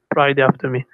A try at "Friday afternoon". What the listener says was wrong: Afternoon, not after me. Friday afternoon.